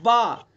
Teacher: دونوں ہونٹوں کی تری والے حصے سے با ادا ہوتا ہے